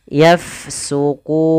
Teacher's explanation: Kemudian pada lafal fa bertemu dengan huruf huruf fa dia sukun, maka kita alirkan nafasnya